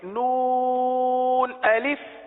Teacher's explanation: نون کو 3 الف تک کھینچ کے پڑھیں گے